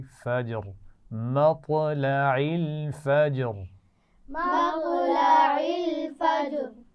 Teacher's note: قلقلہ. اور فجر جیم پر قلقلہ، تو آخر میں را ساکن ہو جائے گی